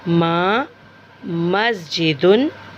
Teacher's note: और इसका मखरज होंठों का बाहर वाला हिस्सा है, यानी होंठों के बाहर वाले हिस्से को मिला के छोड़ेंगे तो माँ अदा होगा।